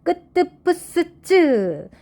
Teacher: 예사소리에다 힘을 주어서 세게 발음한다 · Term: 된소리